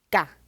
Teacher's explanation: So for example, let's have a look at this word ga with a low tone. Even though you don't see any tone mark, it's a low tone